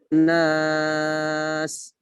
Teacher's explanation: waqaf pada ayat ini harus kita lafazkan desisnya. Sifat sin adalah desis